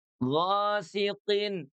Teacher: Ghasiqin. Qinnya dia clean, sama seperti huruf ghain. Tidak ada nafas yang keluar ya.